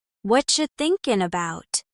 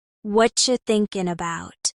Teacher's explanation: Did you hear how about is often reduced to bout?